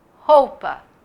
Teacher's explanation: é caixa o i é bem fraquinho é a semivogal roupa o u também sai bem fraquinho que tem gente que fala roupa como se o u não existisse